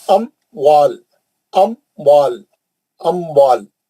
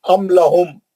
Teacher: میم کو نہیں کھینچیں گے, ام لہم بغیر گننے کے میم کو ظاہر کریں گے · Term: اظہار